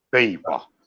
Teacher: Pay, then pa. Stressed pay, unstressed pa.